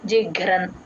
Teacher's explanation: గ కి మహాప్రాణం ఉంది రకారము ఉంది